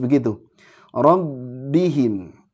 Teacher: nah ini huruf ba ini punya sifat syidah jadi kuat ya jahr